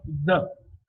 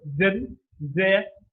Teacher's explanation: The, the almost comes from inside, within both the teeth, both the pairs of teeth.